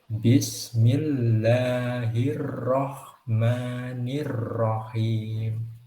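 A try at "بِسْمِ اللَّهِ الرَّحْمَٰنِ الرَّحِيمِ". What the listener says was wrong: Mungkin catatan sedikit dari saya untuk itu getarnya roh mungkin bisa ditahan sedikit lagi supaya getarnya tidak terlalu banyak.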